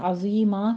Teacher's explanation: عین کو وسط حلق سے ادا کرتے ہوئے ضا کو پر پڑھنا ہے، آگے یا مدہ ادا کرنی ہے، اور عظیمن ہے، عظیما کہہ دیں گے، وقف ابدال کر لینا ہے، 2 کاؤنٹ کرنا ہے یہاں پہ۔